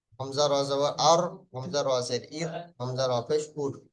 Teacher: জিভের আগার উল্টা পিঠ এবং সামনের উপরের 4 দাঁতের গোড়ার সাথে লাগিয়ে উচ্চারিত হয়, সামনের উপরে 4টে দাঁতের গোড়ার সাথে লাগিয়ে উচ্চারিত হয় র।